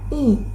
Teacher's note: dibentuk dengan lidah yang berada di posisi tinggi dan depan serta bibir yang tersenyum